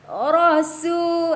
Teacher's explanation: ra memang tebal, tapi su, sin nipis saja. Jangan terus baca rasu, dah tebal.